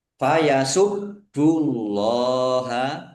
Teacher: Ada tasdidnya ditekan biar tampak dobel. Allahnya dibaca tebal karena harakat di depannya dummah. Lam fathah berdiri mad thobi'i panjang dua harakat. · bnya dibaca dobel. Ada tasdidnya ditekan biar tampak dobel.